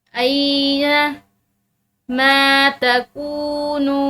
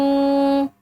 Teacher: काफ के बाद वाव साकिन और नून के बाद वाव साकिन है तो इनको भी एक अलिफ की मिकदार खींच कर पढ़ा जाएगा